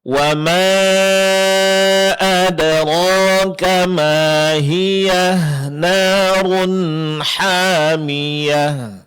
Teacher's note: kalau kita ingin menyambung ke ayat yang terakhir, ha sukun tetap dibaca ha sukun